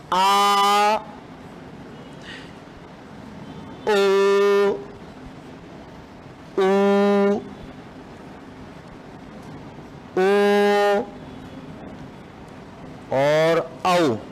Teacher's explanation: जिहवा का पिछला भाग सक्रिय रहता है। पश्च स्वर कहलाते हैं।